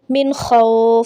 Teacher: یہاں غنہ نہیں کریں گے کیونکہ حروف ہلکی آگے ہے، خا حروف ہلکی کا حرف ہے، ٹھیک ہے، تو یہاں پہ نون کو ظاہر کر کے پڑھیں گے